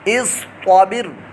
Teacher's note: طا متحرک ہے اور حروف مستعلیہ میں سے پرموٹا بھی پڑھا جائے گا